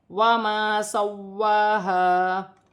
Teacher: واو مشدد ہے، اسے جماؤ کے ساتھ پڑھا جائے گا سختی کے ساتھ ، اور کھینچ کر پڑھا جائے گا 1 الف کی مقدار،